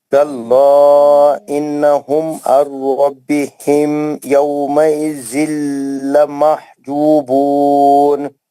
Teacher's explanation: मीम के बाद आपको इजहारी शफी है, बिल्कुल भी नहीं खींचना है.